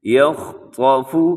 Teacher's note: اس میں خا بھی موٹا ہے، طا بھی موٹا ہے، لیکن باقی دو حروف وہ باریک پڑھے جائیں گے